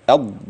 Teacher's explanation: المد في كلمه الضالين ده سته ما يقلش عن كده